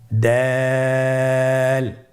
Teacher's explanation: জিহ্বার আগা সামনের উপরের 2 দাঁতের গোড়ার সঙ্গে লাগিয়ে উচ্চারিত হয়